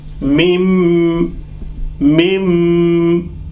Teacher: So after nun sakin, ba has come. So this nun sakin will be silent, and it will be taken over by meme, and the sound will be through the nose · I'm closing my mouth, and sound is coming through the nose for a sec. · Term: ghunna